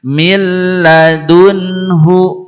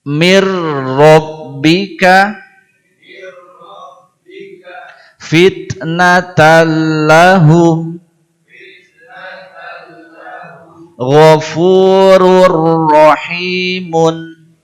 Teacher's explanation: pada nun sukun dan tanwin yang berhadapan dengan lam dan ro tadi tidak idgham bi gunnah tetapi idgham bila gunnah